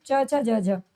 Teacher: च वर्ग जो होता है ये तालव्य वर्ण होता है।